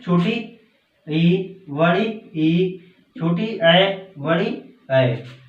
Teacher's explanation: जीभ का अगला भाग कार्य करता है, अग्र स्वर कहलाते हैं